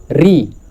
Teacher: आप री को बोलते हैं इसमें कंपन होता है यानी कि मुर्धा री री आप देखिए आप बोल के देखिए